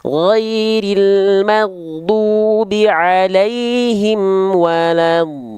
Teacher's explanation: do-nya panjangkan 6 harokat, jangan sampai kurang ya